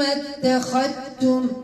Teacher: التاء اخت القدام تقارب هذا ادغام تقارب الذال مع التاء نعم تدغم الذال في التاء ادغام تقارب